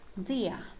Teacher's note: these diphthongs occur in non-rhotic accents, British English, so the R you see here is not pronounced